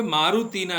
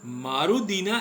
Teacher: જેમ કે મારુતિના શબ્દ હોય તો ત્યાં તી છે, મારુતિમાંનો તી, એ તનો દ થઈ જઈને મારુદીના એવું રૂપ બનશે